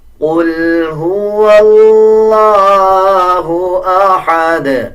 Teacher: جب وقف کریں گے تو دال کے اوپر قلقلہ کیا جائے گا